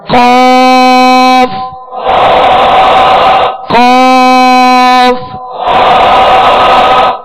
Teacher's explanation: حروف مستعلیہ میں سے. اس کو پر یعنی موٹا پڑھنا ہے. · زبان کی جڑ اور تالو کے نرم حصے سے دو نقطے والا قاف جو پر پڑھا جاتا ہے وہ ادا ہوتا ہے. زبان کی جڑ اور تالو کا نرم حصہ, اس سے قاف ادا ہوتا ہے جو پر پڑھا جاتا ہے یعنی دو نقطے والا.